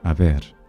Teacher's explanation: The bilabial fricative sound is preserved in Spanish